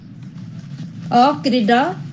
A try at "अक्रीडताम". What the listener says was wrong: अक्रीडताम हो जाएगा, बिल्कुल।